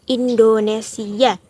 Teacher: Dua suku terakhir si dan A tidak dibaca satu bunyi, tetapi dua bunyi. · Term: vokal rangkap